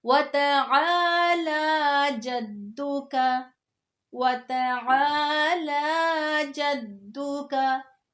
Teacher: ध्यान में रख के कि आइन और लाम को लंबा करना है